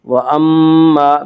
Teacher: وَأَمَّا میم مشدد غنہ ہوگا، غنہ کی مقدار 1 الف ہے